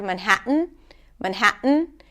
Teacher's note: a lot of times people use the glottle stop instead of the T before an N.